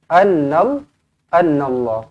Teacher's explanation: Kena baca dengan tebal kerana huruf sebelumnya berbaris atas